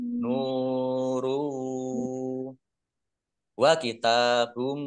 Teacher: Nun domah wawu sukun, mat tobi'i, panjang 2 harokat. Domah tanwin bertemu dengan huruf wawu. Bacaan idgham bi gunnah masuk dengan mendengung yaitu mendengung wawu